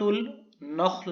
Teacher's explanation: خا کو پر پڑھیں گے، موٹا کر کے پڑھیں گے، اس کی آواز تھک ساؤنڈ ہونی چاہیے، لائٹ نہیں ہونی چاہیے